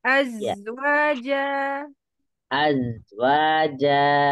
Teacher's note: ada desisnya lebih kuat daripada huruf Sin